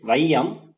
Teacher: ஐகாரம் வந்து சொல்லின் முதல்ல வர்றப்போ ஒன்றரை மாத்திரை அளவுல ஒலிக்கும்